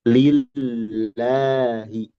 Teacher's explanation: Lalu walam ismil jalalah min lillahi, Lam, ini lam lagi, yang berada pada lafadz Allah, lillahi, alhamdulillahi. Nah, ini muraqqaqah, dibaca tipis. Kenapa? Li'anna ma qablaha maksur. Karena harokat sebelumnya kasroh, yaitu li.